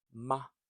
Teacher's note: So it's a neutral tone, light and short, just like the article the.